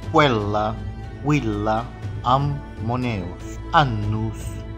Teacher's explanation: As consoantes geminadas ou duplas são pronunciadas separadamente.